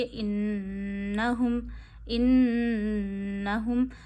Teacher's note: एक उंगली जितनी ठहराइए। हा को गले के आखिर से अदा करिए। · नून पे तशदीद है तो नून की आवाज़ नाक में ले जाइए, 1 उंगली जितनी ठहराइए, हा को गले के आखिर से अदा करिए, इन्नहुम इन्नहुम, नून पे ज़बर नहीं खींचनी, इन्नहुम।